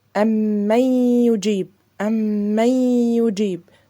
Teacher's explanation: يبقى أنا اديت النون حركتين غنة بس النون مش موجودة، دخلتها في الياء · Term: ادغام ناقص